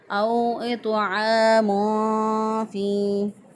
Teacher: तनवीन की आवाज़ को पोशीदा करके एक अलिफ के बराबर गुन्ना करते हुए अदा करेंगे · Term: इख्फ़ा